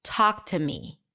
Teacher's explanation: Talk is the primary stress here. to is reduced to a schwa. me is a secondary stress.